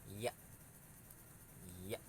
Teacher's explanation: huruf ya ini tempat keluarnya itu dari tengah-tengah lidah dengan langit-langit. Tengah-tengah lidah dan langit-langit.